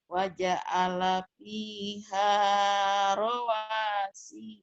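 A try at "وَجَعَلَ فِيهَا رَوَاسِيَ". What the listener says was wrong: Si-nya pendek, sekali lagi. Waja'ala fiha rawasiya.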